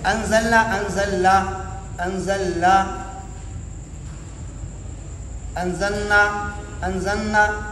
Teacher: صرف لام کا نون کے اندر ادغام ہو جائے گا، نون پڑھا جائے گا، یا پھر نون کا لام میں ادغام کر کے صرف لام پڑھتے ہیں